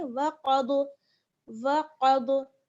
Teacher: क़ाफ और दौद दोनों पुर पढ़े जाएंगे